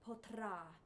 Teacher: that has more than one flip it's a roll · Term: rolled r